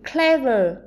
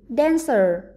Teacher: 3 từ này sẽ có trọng âm rơi âm tiết thứ nhất